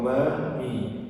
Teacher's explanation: Mim ini juga mudah karena hanya untuk dua bibir, bibir atas dan bibir bawah.